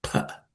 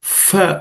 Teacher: The phala is the second letter in the per varga, per class of consonants. The original pronunciation is pa, just like the other vargas, but many people pronounce it as fa also.